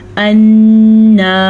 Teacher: नून को गुन्ने के साथ पढ़ेंगे, नून पे शद है इसीलिए